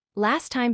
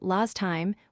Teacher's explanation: Last time becomes last time, where the T at the end of last is not pronounced. The letters T and D are dropped very frequently in connected speech.